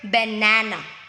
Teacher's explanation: in the word banana, so the stress is on the second syllable